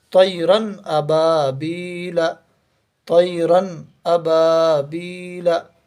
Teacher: ہم یہاں پر پڑھ رہے ہیں طیرن، یہ تنوین کی آواز ہے، اور یہ یہاں پر حمزہ آ گیا ہے، تو یہ بغیر غننے کے پڑھا جائے گا، جلدی پڑھا جائے گا · تنوین میں نون کی آواز بھی ظاہر ہو گئی، اور حمزہ کو ہم نے جلدی بھی پڑھ دیا ظاہر کر کے